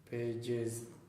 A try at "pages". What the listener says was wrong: pages. It's the same position as S, the only difference is that you vibrate.